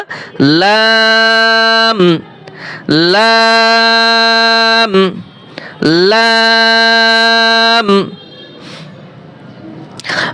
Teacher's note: আট number মাখরাজ জিহ্বার আগার কিনারা জিহ্বার আগার কিনারা সামনের উপরের দাঁতের মাড়ির সঙ্গে লাগাইয়া